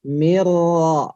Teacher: Mirro, udah nggak ada nunnya ya, nggak ada nunnya, langsung ke ro ya. Mirro, ro tebal, ro tebal.